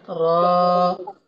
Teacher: Alif lam mim ra. Nah, ro-nya hati-hati ya, tetap 2 harokat.